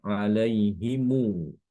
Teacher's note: kumbul ini membaca mim Jamak itu dengan Silah sila itu ya dibaca panjang sedikit dua harakat ditambahkan huruf wau